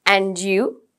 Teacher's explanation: When we say, and you, it's rising intonation. Rising intonation means your voice goes up and it stops there. Okay. And you, right?